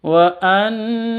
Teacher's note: Nun tasydid itu cara bacanya harus didengungkan. Kenapa? Karena ini bacaan gunnah.